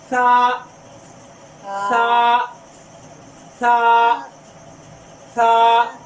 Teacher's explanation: زبان کی نوک جب دو سامنے دانت ہیں وہاں اندر لگے گی جا کے آپ کا سا ادا ہوگا